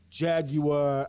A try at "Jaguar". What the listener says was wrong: Who says Jaguar? There's no fucking W in it. It's Jaguar. guys say Nike is pronounced Nike and not Nike, then we say it's pronounced Jaguar, not Jaguar.